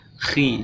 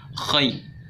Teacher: huruf kha itu huruf isti'la, jadi tingkat ketebalannya kurang kalau harokatnya kasroh, jadi agak tipis.